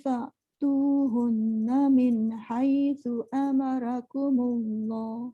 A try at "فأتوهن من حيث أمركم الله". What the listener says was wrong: Tebalkan sikit ra, lepas tu fa tu jangan fa. Hun dengung. Min tu jangan terhenti macam dia tak ambil nafas tapi dia min hai jangan sebab dia jadi macam terputus bacaan tu. Dia jangan min hai jangan gitu.